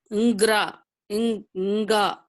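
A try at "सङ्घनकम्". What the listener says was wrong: you cannot read Nga and all. You can have to read with the previous preceding vowel.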